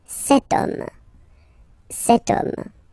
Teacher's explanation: H is not pronounced, so the first sound that we hear is O